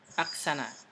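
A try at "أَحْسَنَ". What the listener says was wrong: Bukan aksana tapi ahsana, naam.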